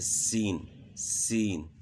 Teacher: زبان کی نوک سامنے والے نیچے دانتوں کے ساتھ ٹچ ہوگی اور معمولی سی اوپر والے دانتوں کے ساتھ بھی، تو سیٹی کی مثل کی آواز پیدا ہوتی ہے